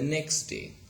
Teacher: Okay, we see the omission of t sound. So t is elided between x and d sound